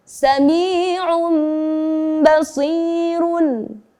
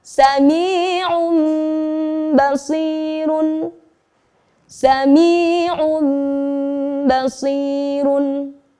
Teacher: Kemudian diikuti dengan huruf ba. Maka kita harus mengganti bacaan nun sukun tanwinnya menjadi bunyi mim. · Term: iqlab